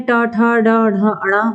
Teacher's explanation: ट वर्ग टा वर्ग जो है हमारा वो मूर्धन्य से यानी मूर्धा से उच्चरित होता है